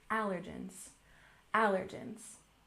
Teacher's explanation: Once again, allergens, we stress the first syllable, allergens, allergens.